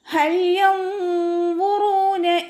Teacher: നൂനിൻ്റെ സൗണ്ടിനെ വ്യക്തമായിട്ട് കേൾപ്പിക്കാതെ ഒന്ന് ഹൈഡ് ചെയ്യുകയും ചെയ്യുക, അതോടൊപ്പം തന്നെ മണിക്കുകയും ചെയ്യുക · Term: നൂൻ സാക്കിന